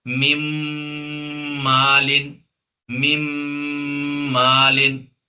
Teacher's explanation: ٹھیک ہے، ادغام نون تو میم کے ساتھ ملے گا ہی، ادغام میں نہیں ملانا، نون میم کے ساتھ ملے گا لیکن ساتھ میں گنہ بھی ہوگا